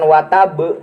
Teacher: qalqalah kubro anu aya di akhir kalimah